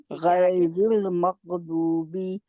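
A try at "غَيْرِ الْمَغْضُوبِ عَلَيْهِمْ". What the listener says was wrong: मग अभी भी आपका मग मग, आप गैन को मोटा भी कर रहे हैं लेकिन मखरज से बाहर निकलना नहीं हटा रहे।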